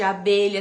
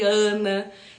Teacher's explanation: tem o A de abelha, tem o AN de Ana, que é nasalizado